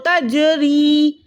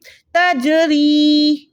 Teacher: ठीक है, जीम साकिन है यहाँ पर, तो आपने तजरी नहीं पढ़ना है, इसको आपने पढ़ना है तजरी। जीम में थोड़ी सी लर्जिश हो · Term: कलकला